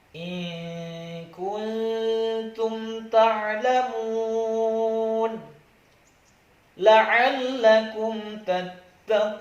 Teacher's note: Izhar syafawi adalah mim sukun bertemu dengan huruf selain mim dan ba. Maka bunyi mim sukun dibaca jelas di bibir.